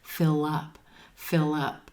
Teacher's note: Notice how that L links over in front of the word up again.